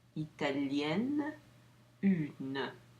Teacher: I pronounce the N at the end.